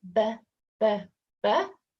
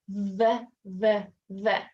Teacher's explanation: so the BBB does not vibrate the V does